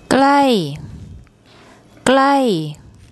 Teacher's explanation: you hear a falling tone when she says that